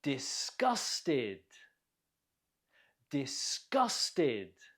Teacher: Note the stress on the second syllable. Gus. Disgusted.